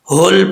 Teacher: ہا جو ہے یہ بھاری ساؤنڈ والا ہے، بریک ہا نہیں پڑھنا، ہول پڑھنا ہے، حول نہیں پڑھنا، ٹھیک ہے۔